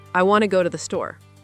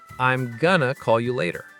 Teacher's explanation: Want to becomes wanna. Because the small connecting words get reduced.